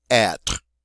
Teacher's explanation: it is not a two syllable word it is one syllable it ends on the are sound